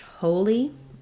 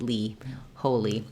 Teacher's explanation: that has first syllable stress, the O vowel, and the E, the letter I says the E sound